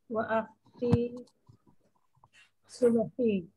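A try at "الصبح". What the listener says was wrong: As-subhi. Kalau ada al dibaca, Bu.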